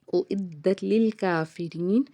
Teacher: دال کے اوپر تشدید ہے، دال کو 2 بار ادا کریں گے